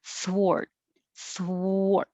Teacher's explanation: i'm not going to release the t